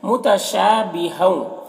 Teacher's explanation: متشابہوں، شاہ میں الف مدہ ہے 1 الف کے برابر کھینچیں گے۔ ہوں میں ادغام ناقص ہوگا، تنوین کو واو سے ملا کر غنہ کے ساتھ پڑھیں گے